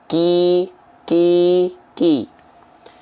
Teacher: kalau Kaf itu sifatnya adalah hams mengalirkan nafas atau memercikan nafas sedikit